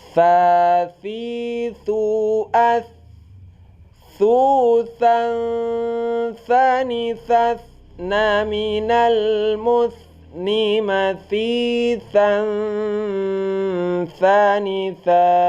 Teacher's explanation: dia itu hamas, ya, keluar angin saat kita baca · Ada tha ini keluarnya di ujung lidah. Nah, ujung lidah dan di antara gigi-gigi. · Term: huruf tha